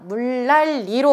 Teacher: 두 번째 음절의 니은이 다 리을로 바뀌고 있죠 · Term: 유음화 현상